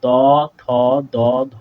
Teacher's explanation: আমাদের জীবটা দাঁতের ওপরের পাটির সাথে লেগে উচ্চারিত হচ্ছে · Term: দন্ত ব্যঞ্জন, দন্ত